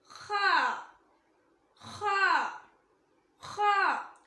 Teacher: Next ஹ. இது தொண்டையின் ஆரம்ப பாகத்திலிருந்து வரும். இது ஹெவி லெட்டர்.